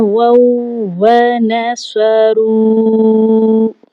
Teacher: واو واو زبر واو، اور اس کے بعد اس کی اپنی ذاتی حرکت واو زبر وا، واو وا، واو نصرو، 4 الف کے برابر کھینچنا ہے کیونکہ واو کے اوپر جو ہے مدہ آ چکی ہے